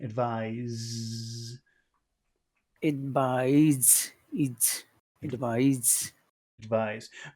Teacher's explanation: the accent is on the final syllable it's never on the first syllable ever